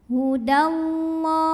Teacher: Lam jalalah dibunyikan secara tafkhim karena huruf sebelumnya barisnya fathah, jadi tebalkan.